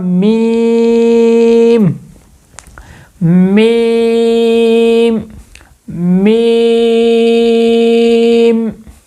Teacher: دونوں ہونٹوں کے خشکی والے حصے کے ملنے سے، اوپر والا ہونٹ نیچے والا ہونٹ، یہ دونوں ہونٹ خشکی والے جو دونوں حصے ہیں، جو باہر جو خشکی والا ہے، یہ دونوں جب آپس میں ملیں گے تو کیا ادا ہوگا؟